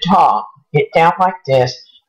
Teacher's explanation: if you hold your nose and talk it down like this this is hyponasality